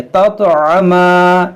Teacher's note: ये ता में कलकला करेंगे